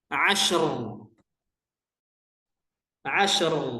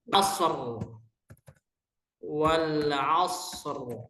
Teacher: ketika ro ini sukun karena waqaf sebelumnya sukun sebelumnya fathah maka ro ini dibaca tafkhim